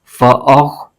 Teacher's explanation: خو حروف مستعلیہ کا حرف ہے، اس کو پر یعنی موٹا کر کے پڑھنا ہے